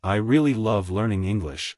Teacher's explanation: in I really love learning English the words love and English are stressed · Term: sentence stress, Sentence stress